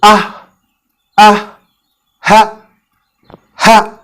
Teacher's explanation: launch or the deepest part of your throat or aksal halak ha is articulated almost in the same way as we cough